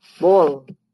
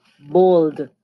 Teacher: the d is deleted or dropped after the l